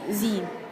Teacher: Ini termasuk mad tabi'i karena kasroh bertemu dengan ya di dalam satu kalimat dan bacaannya 2 harokat.